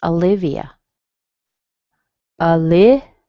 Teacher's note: You can hear a little E on that I towards the end